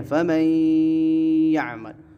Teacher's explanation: نون ساکن کے بعد حروف ادغام میں سے یا آیا تو ان دونوں کو ملا کے ایک حرف بنا دیا گیا